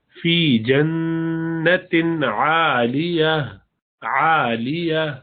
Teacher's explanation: فی جنت، نون مشدد ہمیشہ غنہ ہوتا ہے، اور تنوین جو جنت کے اندر ہے تاکہ نیچے دو زیر، اس کے بعد عین آ رہا ہے، عین حروف حلق میں سے ہے اور حروف حلق پر اظہار کرتے ہیں تو اس میں کھینچیں گے نہیں، غنہ نہیں کریں گے